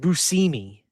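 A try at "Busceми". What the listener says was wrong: You don't say shush. It's busimi technically.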